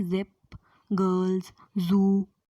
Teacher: vocal cords होते हैं loosely together, hence it is alveolar voiced fricative